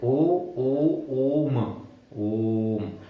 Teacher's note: प्लुत स्वर हो गया, जिसे बोलने में आदमी लंबा खींचता है · मतलब जितना एक ओ को बोलने में टाइम लग रहा है, जितना एक ओ को बोलने में समय लग रहा है, वो 3 ओ के बराबर प्रोनाउंस करना है, उतना टाइम लेना है जितना 3 ओ को बोलने में लगेगा · प्लुत स्वर होते हैं, जिनमें इको टाइप के होते हैं, जिन्हें लंबा खींचा जाता है